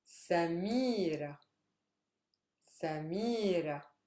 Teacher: See, I'm stressing the mi.